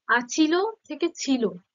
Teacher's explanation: শুরুতে একটা আ ছিল অর্থাৎ একটা স্বরধ্বনি ছিল সেটা এখানে নেই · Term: আদি স্বরলোপ